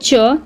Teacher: च तालव्य ध्वनि तो है परंतु महाप्राण नहीं है।